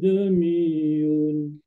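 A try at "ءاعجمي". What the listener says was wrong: Okey, tashil tu dah boleh. Ain pun, ain bagi jelas sikit. Biar kita terasa macam terlebih kerja sikit. Ajami.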